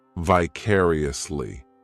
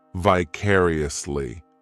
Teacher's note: This adverb has 5 syllables, and the stress is on that second syllable, vicariously.